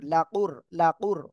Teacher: র সেকেন্ড তার ডানে পেশ মোটা আওয়াজে পড়তে হবে।